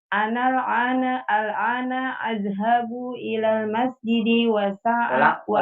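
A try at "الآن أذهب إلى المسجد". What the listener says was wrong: Ana. Jangan sampai ke huruf ain. Kalau ain beda nanti.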